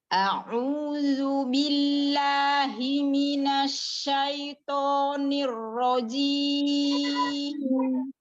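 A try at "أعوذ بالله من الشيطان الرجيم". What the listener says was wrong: Nah, a'udzu billahi minasyaitonir rajim. Ya, kita memang masih banyak tamtidnya dikata a'udzu. Nah, itu namanya tamtid. A'udzu billahi minasyaitonir rajim. Tidak rajim, ar-rajim. Tadi jangan jim, jangan diayun. Ar-rajim. Mat jangan diayun. Ar-rajim.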